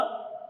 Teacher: ये आपके मूर्धा से बोला जाता है, मूर्धा से बोला जाता है, और ये नासिका से भी बोले जाने वाला वर्ण है।